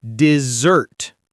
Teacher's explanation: You stress the second part, dessert.